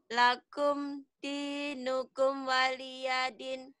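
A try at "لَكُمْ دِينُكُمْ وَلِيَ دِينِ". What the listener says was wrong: Lakum M-nya jangan buru-buru. Lakum dinukum waliyadin. Lakum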